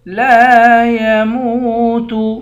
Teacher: لام کے بعد الف ہے، الف حروف مدہ ہے، اس کو ایک الف کی مقدار کھینچ کر پڑھیں گے، میم کے بعد واو ہے، واو می حروف مدہ ہے، اس کو بھی ایک الف کی مقدار کھینچ کر پڑھیں گے۔